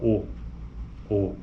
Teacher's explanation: veja que existe o arredondamento então é uma vogal arredondada